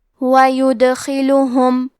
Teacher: کلمت یدخلہم میں حرف دال پہ جزم ہے، کیونکہ دال بھی حروف القلقلہ میں سے ہے تو ہم یہ حرف کو ہلاتے ہوئے یہ کلمہ کو پڑھیں گے · خا کو موٹی آواز میں پڑھنا ہے. حرف اللام کو اور ہا کو دونوں کو پیش سے پڑھیں گے.